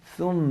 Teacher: जबान कहाँ आएगी थोड़ी सी बाहर